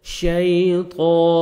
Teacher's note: تا نہیں پڑھنا، طا کو موٹا کر کے پڑھنا ہے